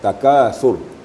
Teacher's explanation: Jangan sampai kita panjangkan Sur itu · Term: pendek